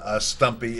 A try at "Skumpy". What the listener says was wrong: No, it's Skumpy. with a K.